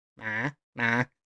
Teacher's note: we have a high tone, which is a 4 to 5, really high up there